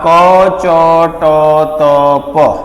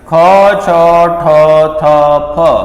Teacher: જેમાં પ્રાણવાયુ ઓક્સિજનનો જથ્થો વધારે બહાર નીકળતો હોય તો એ મહાપ્રાણ છે